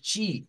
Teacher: esos sonidos chi que acabamos de decir de las T y la e son característicos de Brasil solo en Brasil los vamos a escuchar